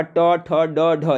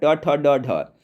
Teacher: मूर्धन्य में आपका ट ठ ड ढ, ये सब का उच्चारण मूर्धा से होता है, ये मूर्धन्य व्यंजन का उदाहरण है